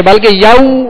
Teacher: وہاں پر ماشاءاللہ والین کا قاعدہ ہے. یو، اس کو یاؤ نہیں پڑھیں گے بلکہ یو معروف پڑھیں گے